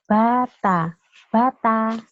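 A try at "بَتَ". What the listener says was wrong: Oke, jadi kalau hurufnya udah digandeng, bacanya juga harus ngalir ya, jangan terpisah. Bata gitu nggak boleh. Jadi harus ngalir satu kalimat atau satu ayunan. Bata gitu.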